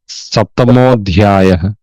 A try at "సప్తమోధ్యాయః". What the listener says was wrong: ధ్యాయ అని విడదీస్తున్నారు, అవగ్రహం వస్తుంది. ఇప్పుడు అధ్యాయాలు రెండో అక్షరంగా పలకాలి. రెండో అక్షరంగా పలికినప్పుడు అధ్యాయ పలికినట్టు వస్తుంది. ఆ సప్తమ మో పలకటంలో దానికి ఉత్వం వచ్చేసింది. సప్తమ అధ్యాయ. దానికి విసర్గ పోయి ఉత్వం వచ్చి మో అయింది. అంటే ఉత్వం అంటే ఊ వచ్చింది అనమాట. మో అయింది. సప్తమోధ్యాయ.